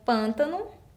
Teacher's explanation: Eu tenho a palavra pântano, a minha sílaba forte no início, som fechado, acento circunflexo.